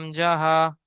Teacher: 1 নম্বর মাখরাজ হলকের বা কণ্ঠনালী শুরু হতে উচ্চারিত হয় হামজা হা